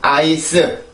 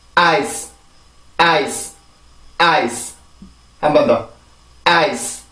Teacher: 절대 아이스 이런 발음이 아니에요. 반드시 강세가 들어가고 이렇게 그 자음이 뒤에 있을 때는 으라는 소리가 들어가면 안 돼요. 순수하게 이 자음만 만들어주고 소리를 끝내면 돼요.